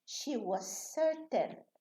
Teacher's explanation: we reduce the voiced one, the first one. She was certain, as if we have two S's.